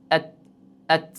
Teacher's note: Va albatta ta harfining chiqadigan o'rni bu tilimizdan uchi yuqori old tishlarning tubiga tegishligi bilan chiqadi. Mana tilning uchi yuqori old tishlarning tubiga tegishligi bilan, ya'ni tishning chiqadigan joyiga tegishligi bilan chiqar ekan